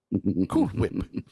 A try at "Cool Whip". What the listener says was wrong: Why are you saying it like that? Why are you saying it like that? Why are you emphasizing the H so much?